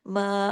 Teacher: मीम के साथ अलिफ मद्दा है दो हरकात खींचा · میم کے ساتھ الف مدہ ہے، 2 حرکات کھینچا